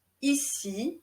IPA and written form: isi (ici)